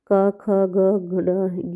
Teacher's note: जो का वर्ग होता है, का ख ग घ ये उसमें हा भी आता है, इसे हम बोलते हैं कंठय